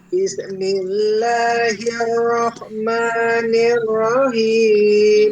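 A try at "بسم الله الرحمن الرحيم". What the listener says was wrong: Tinggi wae Bu eta mah. Bismillahirrahmanirrahim.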